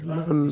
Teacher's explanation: জিহ্বার আগা এবং উপরের সামনের একটি একটি ধারালো দাঁত থেকে অন্য ধারালো দাঁতের গোড়ার সাথে লাগিয়ে উচ্চারিত হয় নুন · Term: নুনের মাখরাজ